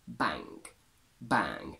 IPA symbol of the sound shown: æ